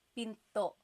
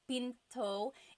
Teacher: Do you hear the glottal stop when I say pinto?